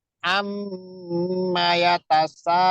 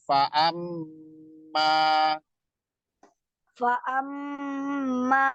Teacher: Jadi mim dengan nun itu kalau ada tasdid cara bacanya seperti itu. Ditekan dan ditahan 2 harokat. Nggak boleh buru-buru ya. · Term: mim bertasdid